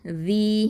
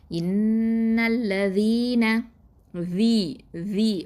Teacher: ஜால் கெஸ்ரா, யா சுக்கூன், வி. இது யாவுல் மத்து, 2 அலிஃப் நீட்டணும்.